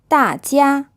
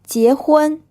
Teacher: It might not be touching your teeth, but it almost does. And the bit of the tongue behind the tip presses up against the top of your mouth at the front. This gives the sound more of a softer, less harsh sound than the J in English. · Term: J sound in Pinyin